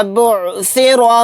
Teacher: را کے اوپر زبر ہے، را کو موٹا یعنی پر پڑھیں گے۔